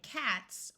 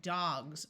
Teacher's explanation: e s to make something plural s can have two sounds it can be the sound of s like in cats or it can take on the z sound like in dogs